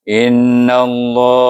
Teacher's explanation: Sebab nun baris di atas. Kita idghamkan nun kepada lam di sana, bunyinya innallaha